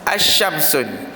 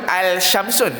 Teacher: Alif lam syamsiah, alif lam itu tak sebut.